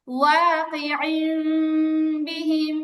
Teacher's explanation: ওয়া মিম হবে, তবে ঠোঁটের মাঝখানে অতি সামান্য ফাঁকা থাকবে।